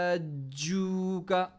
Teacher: جیم middle throat سے, middle زبان سے, زبان کے بالکل مڈل حصے سے نکلتا ہے جیم, مخرج وہ جگہ ہے, تو اس جگہ پر آپ فیل کریں گے اسٹریس.